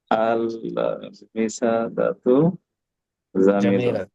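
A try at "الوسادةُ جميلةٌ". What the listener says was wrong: জামিলাতুন এই যে আল বিসাদাতু তা আছে শেষে জামিলাতুন বালিশটি সুন্দর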